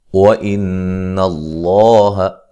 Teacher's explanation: مع الغنہ ہوگا۔ وَإِنَّ اللَّهَ نون مشدد پہ غنہ ضروری ہے، لفظ اللہ کو موٹا ادا کریں گے